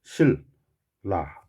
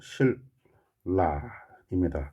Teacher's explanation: 니은이 리을 앞에 니은이 리을로 발음되죠. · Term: 유음화